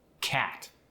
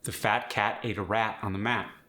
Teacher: The short A isn't an ah sound like it is in some accents, and it's not an A sound. It's in between.